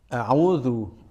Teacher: Pastikan makhrajnya sesuai dengan makhraj hamzah yang ditentukan di ilmu tajwid, yaitu di pangkal tenggorokan. Hati-hati jangan sampai membacanya a'udzu, a'udzu, harus di pangkal tenggorokan. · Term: huruf hamzah